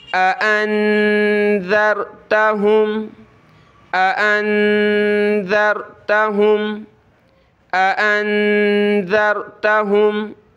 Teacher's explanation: نون پہ ہم اخفا کریں گے، ناک میں آواز پیدا کریں گے، اور ذال پہ ہم نے زبان نکالنی ہے تھوڑی سی، اور ذال کو آگے را سے ملانا ہے، ٹھیک ہے۔